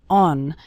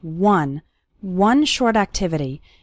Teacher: the word one starts with the W sound okay some students pronounce it like on but that's not correct